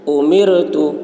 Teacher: رائے ساکنہ سے پہلے زیر ہے اس لیے را کو باریک پڑھیں گے.